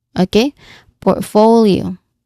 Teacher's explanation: Now, the stress is on the second syllable for portfolio.